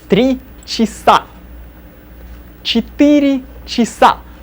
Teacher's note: Cha unaccented sounds as chi.